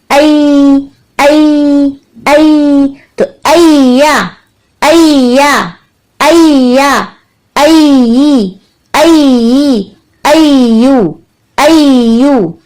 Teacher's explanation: या की सिफात में रुखावा यानी आवाज की चलने वाली कैफियत शामिल है, मखरज पे से आवाज की चलती हुई कैफियत महसूस होगी। आई आई यानी जबान के दरमियानी हिस्से को हमने ऊपर तालु की तरफ बुलंद कर लिया।